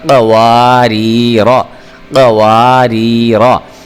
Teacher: ایک را کو میں باریک پڑھ رہا ہوں کیونکہ اس کے نیچے زیر ہے، اور اس سے جو اگلا را ہے اس را کو میں موٹا کر کے پڑھ رہا ہوں کیونکہ اس را کے اوپر زبر ہے